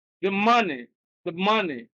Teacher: money is stressed, the is suppressed